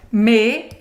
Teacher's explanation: a primeira parte dessa palavra senhores é me aqui sim me como se fosse um e com acento circunflexo em português e depois vai ser fechado o biquinho francês